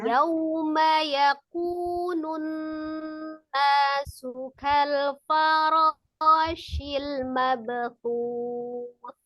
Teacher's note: Waw sukunnya disempurnakan, dia harus dimonyongkan kedua bibirnya.